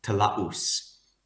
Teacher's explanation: So if you look at this word throughout Borneo, there's some reflex of talaus, and that word has a glottal stop in between the A and the U, and it ends with an S